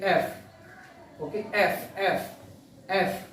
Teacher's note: और वो फ जब बोला जाता है तो ऊपर के दांत नीचे के लिप्स से टच करते हैं, जैसे F, ओके, F, F, F।